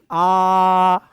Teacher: जिनके उच्चारण में मुख पूरा खुलता है उनको क्या कहते हैं लाला? उनको कहा जाता है आपका विवृत्त स्वर।